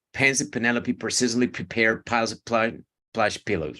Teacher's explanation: remember that you have to aspirate all your peas